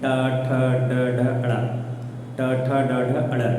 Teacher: इसका जिह्वा थोड़ी सी टर्न होगी आपके दांत के ऊपरी वाले हिस्से पे, मतलब ऊपरी जबड़े पे जाता है लेकिन दांत से थोड़ा सा ऊपर वहाँ पे टर्न करती है